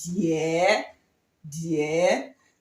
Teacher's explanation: the third tone, falling and rising tone